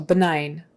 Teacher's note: the G is silent, and the I is a long I sound